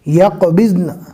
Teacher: نون کو آدھا پڑھیں گے اس لیے کہ نون کے اوپر جو زبر ہے رکنے کی حالت میں جزم بن جاتا ہے۔